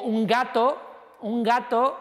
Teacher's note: la n es velar vale es decir que tengo toda una serie de variantes de la n que dependen del sonido que viene detrás